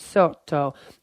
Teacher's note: a long or doubled consonant sound, such as the TT in the Italian word sotto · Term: geminate